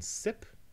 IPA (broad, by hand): sɪp